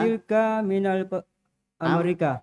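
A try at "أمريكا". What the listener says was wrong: Amerika. Ro-nya panjang atau pendek? Ro, ri, panjang atau pendek? Dibaca panjang karena ada ya setelahnya ya sukun ya.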